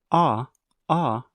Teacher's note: are making a circle with your lips oh oh and then when you say ah ah your tongue is back